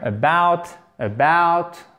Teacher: on entend très peu le a en fait c'est comme un e très atténué